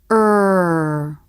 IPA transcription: ɹ